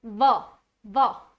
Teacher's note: दंत्योष्ठ व्यंजन इसको क्यों कहा जाता है? क्योंकि जब हम व का उच्चारण करते हैं तो हमारे ऊपर के दांत और नीचे के ओष्ठ आपस में स्पर्श करते हैं। देखिए व, व, है ना, इसीलिए दंत्योष्ठ व्यंजन।